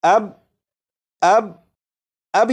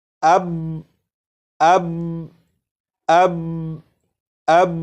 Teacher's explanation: با کو پڑھ کر آواز کو ختم نہیں کیا جا رہا بلکہ با کو پڑھ کر آواز کو روکا جا رہا ہے